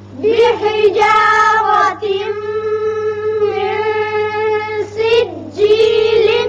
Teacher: نون ساکن کے بعد سین جو کہ حروف اخفا میں سے ہے یہاں اخفا ہوگا